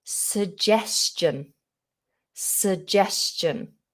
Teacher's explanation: so we have a schwa in the position of the first vowel so we don't say su or su it's just a schwa